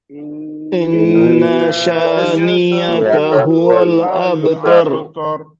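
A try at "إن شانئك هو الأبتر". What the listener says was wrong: یہ نیا کا ہو گیا. دیکھیے یہ نیا کا نہیں، یہ یا نہیں ہے، نیا کا ہے. ان شانئك نیا کا نہیں، نیا کا نہیں، نیا کا. ان شانئك ان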